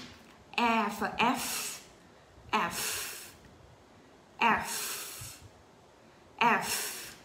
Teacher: Còn F, F thì răng trên nè. Ừ. Cắn môi dưới. Và chúng ta nói âm F thổi ra coi. Rồi chúng ta nói lại nha.